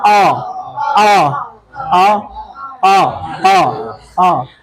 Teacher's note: British वाले इसको पढ़ते हैं आ, लिप्स ऐसे ओपन रहते हैं.